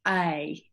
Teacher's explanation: And you may, with an Australian accent, actually have a diphthong pronunciation for that. You might go A, and you start off open and become smiley, whereas I don't.